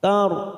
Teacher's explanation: Munkar. Karena ada huruf ro saat kita mewakafkan di sini, maka kita baca tafkim. Karena sebelumnya ada harokat fathah.